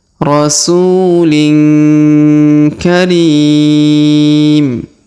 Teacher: huruf ri dipanjangkan 2, 4 atau 6 harokat · huruf tanwin in bertemu ka maka didengungkan dan disamarkan